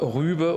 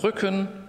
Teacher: Jeweils gespannt, ungespannt. Und dann hängt das halt auch mit der Länge zusammen.